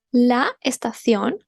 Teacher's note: we kind of mix the A and the E here